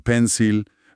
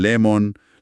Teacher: Es el sonido vocálico más común de todos, pero es átono, neutro, relajado. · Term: schwa